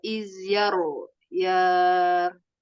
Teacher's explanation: ro sukun dibaca tafkim